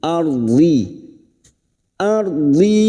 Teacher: ro sukun yang didahului fathah kita baca tafkim